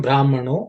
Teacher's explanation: Brahmanaha has become Brahmano. That's a Visarga has become O because of Sandhi.